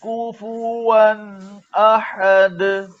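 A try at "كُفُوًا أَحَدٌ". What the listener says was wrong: कुफुवन कुफुवन अहद जी। कुफुवन ये नहीं, डायरेक्ट पढ़े। काफ पर भी पेश है, फा पर भी पेश है, और वाव में तो वैसे ही हॉर्न गोल होंगे। कुफुवन कुफुवन कुफुवन अहद, कुफुवन अहद, कुफुवन ये ना करे इसमें। कुफुवन कुफुवन कुफुवन डायरेक्ट, ये होंठ को आगे की तरफ ना लाए जी।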